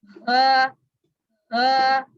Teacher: आप जब उंगली रखते हैं ना, जब ये वाला मखरज आप जो भी पढ़ते हैं, आप जब उसकी उंगली रखेंगे हलके से निचले वाले हिस्से पे, जहाँ पे आपको फील होता है ये जो दो हड्डियां मतलब एक कह लें होल सा बना होता है ना ये सीने के ऊपर, ये हलक के नीचे सबसे एंड में, जी वहां से ये आवाज निकलती है ह ह। हा हा हमजा, हमजा हा यस, वेरी गुड।